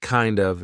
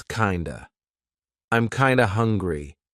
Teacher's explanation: Kinda, instead of kind of. Again, we're turning that of into a schwa. So it's not kind of, it's kinda.